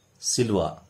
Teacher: आता समजा सिलवान हे हलनपद, या ठिकाणी याचा उच्चार कसा केला जाईल, सिलवा, कारण या वाक्याचे शेवटचे अक्षर हे हलंत न आलेलं आहे, त्यामुळे या ठिकाणी या न चा त्या ठिकाणी लोप केला जातो आणि त्याचा उच्चार सिलवा केला जातो